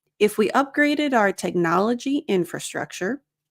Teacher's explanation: Again, if we upgraded and notice here we have connected speech, upgraded the D sound connects to the O.